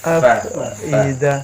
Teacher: bibir bawah bertemu dengan gigi seri atas